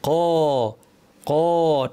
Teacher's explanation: কফকে ভারী করার সাথে ঠোঁট গোল করার কোনো সম্পর্ক নাই। জবরের শেপে ঠোঁট রেখেই জিহ্বা দিয়ে আওয়াজকে উপরে ঠেলার মাধ্যমে ভারী করতে হয়। ক ক ঠোঁট স্বাভাবিক।